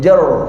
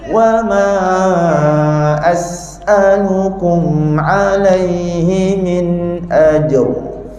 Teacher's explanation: Kita sebut jer, lidah ke belakang, automatik jadi tebal. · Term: ra tebal